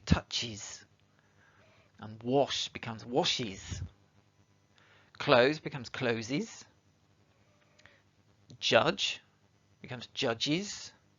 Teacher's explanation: So you can hear that it's an is sound at the end of the verb when you're saying it.